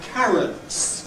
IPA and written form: ˈkærəts (carrots)